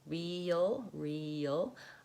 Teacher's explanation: I have a little bit of a Y sound in there between the E and the L.